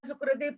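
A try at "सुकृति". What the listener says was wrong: Sukriti, long E, Sametya Sukriti.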